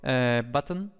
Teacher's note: núcleo es la n entonces ahí realmente en button no hay en la segunda sílaba no tiene ninguna vocal sino que es la n la que es el núcleo de la sílaba